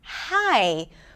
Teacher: the air is restricted here in the glottis, right? Coming out slowly for an H sound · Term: glottal consonant